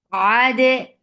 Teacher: Ade, ain from your throat, for fatha open jaws attached with dal. Dal will get sifa of qalqala. And qalqala should be very clear.